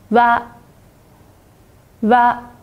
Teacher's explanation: 蛙的发音方法是半元音的u加上元音的啊相拼而成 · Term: 蛙行